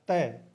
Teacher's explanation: के देख लीजिए प या त त बोल के देखोगे तो जीभ है वह दांतों को स्पर्श करती है